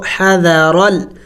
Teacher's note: اس الف کو نہیں پڑھیں گے اور جم کر کے پڑھیں گے را اور لام کو. حذرل.